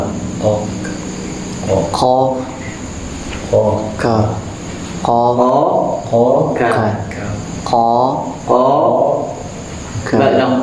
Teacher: Kemudian wal kafu summal kafu asfalu. Berarti qaf dan kaf, perhatikan, keluarnya sama dari pangkal lidah.